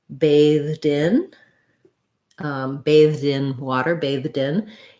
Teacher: as i'm linking that i can put my d on the next word it's easier than to say bathed in than just to say